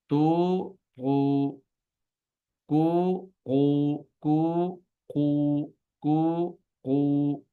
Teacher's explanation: तू लंबा करके दो हरकत के बराबर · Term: उल्टा पेश